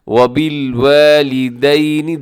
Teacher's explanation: واو کو لمبا کیجیے گا کیونکہ الف مدہ ہے